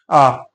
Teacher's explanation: आपको महसूस होगा कि हम जीभ के बीच वाले भाग का प्रयोग कर रहे हैं यानी मध्य स्वर